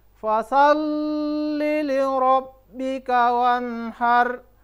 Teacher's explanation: Kemudian di ayat selanjutnya, ayat kedua itu fasalli li rabbika wanhar. Huruf lam dan huruf ba itu bertasdik, maka ditekan dan ditahan selama 2 ketukan.